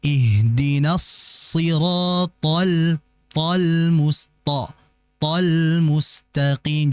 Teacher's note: Isti'la ini artinya tebal, itbaq ini asyaddu tafkhiman, jauh lebih tebal dibandingkan isti'la. Ta ini memiliki sifat isti'la yang bermakna tebal, akan tapi dia juga memiliki sifat itbaq.